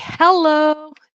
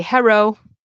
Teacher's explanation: instead of hearing people say hello you might hear them say hero with an R